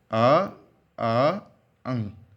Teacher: इसमें कहीं पर भी आपकी जीभ का प्रयोग नहीं हो रहा केवल सीधे गले से आवाज निकल आ रही है और मुंह से निकल रही है आप बोलकर देख सकते हैं